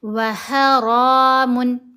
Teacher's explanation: وَحَرَامٌ، ح کو گلے کے درمیان والے حصے سے ادا کیا، اور را کو ہم موٹا پڑھیں گے، اوپر کھڑا زبر ہے، را کو لمبا بھی کریں گے۔ وَحَرَامٌ، میم کے اوپر 2 پیش ہیں، آگے عین ہے، یہاں ہم نے اظہار کرنا ہے